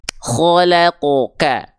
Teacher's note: huruf kho ketika fathah dia dibacanya kho, tidak kha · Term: huruf yang tebal